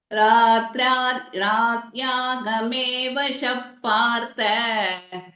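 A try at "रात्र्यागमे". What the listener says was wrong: ராத்திரி ஆகமே. சோ ராத்ரியாகமே. ஆஹா, திரிக்க உள்ளது. திரியக்ஷரி நம்ம சொல்றோம் இல்லையா இதுல, இந்த மாதிரி இத்து இரு எல்லாம் சேர்த்து வரும். ராத்ரியாகமே.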